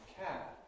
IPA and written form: kæb (cab)